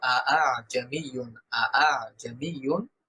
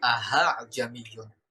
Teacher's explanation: কোনভাবেই দ্বিতীয় হামজাটা স্পষ্ট করে প্রথমটার মতন হবে না